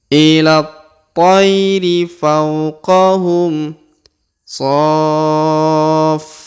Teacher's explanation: huruf so kita panjangkan 6 harokat ya, karena di depan huruf so terdapat setelah ada tanda 5 harokat ya, terdapat tanda tasdid.